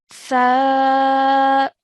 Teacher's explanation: you produced a sound by touching the tip of your tongue to your top two teeth